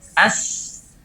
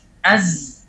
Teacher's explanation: Sin dan zai kita sudah bahas sebelumnya, makhrajnya sama, cuma perbedaannya hanya pada sifat jahar dan hamas. · Kalau seandainya kita hilangkan sifat jahar pada zai, maka secara otomatis akan keluar huruf sin. Kalau misalnya huruf sin kita berikan sifat jahar, kita keraskan suara, itu akan otomatis, secara otomatis tidak perlu di-setel lagi, secara otomatis akan menjadi huruf zai.